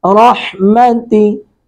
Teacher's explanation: را کو پر کریں گے، ہا کو حلق سے ادا کریں گے